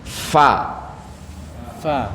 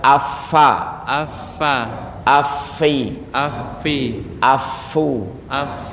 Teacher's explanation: dia letaknya di gigi seri bertemu dengan bibir bagian bawah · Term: huruf Fa